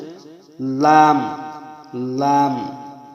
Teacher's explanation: দেখুন, ৮ নম্বর মাখরাজ জিহ্বার আগা তার কিনারা সামনের উপরের এক পাশের দাঁতের গোড়ার সঙ্গে লাগাইয়া একটি হরফ উচ্চারিত হয়, সেটা হচ্ছে লাম, লাম।